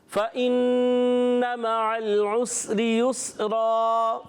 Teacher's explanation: یہاں پر فا کی ادائیگی کلیئر کریں گے، نون مشدد ہے، ایک الف کا غنہ بھی کرنا ہے، مع العین کی ادائیگی کلیئر، لام کو ہلانا نہیں ہے، پھر عسری میں بھی سین کو نہیں ہلانا، عین کی آواز کلیئر حلق کے درمیان والے حصے سے، را کے نیچے زیر باریک ادا ہوگا۔ · دوسرا را جب زبر کے ساتھ ہے، 2 زبر کے ساتھ ہے، وقف کرنے میں بھی پر رہے گا اور ویسے بھی پڑھیں تو یہ پر رہے گا، ٹھیک ہے۔